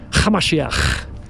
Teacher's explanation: So if we were to be transported, we went back in time 2,000 years, you would hear his followers call them Yeshua Hamashiach, with a ch sound. You have to add a little bit of a throaty little ch.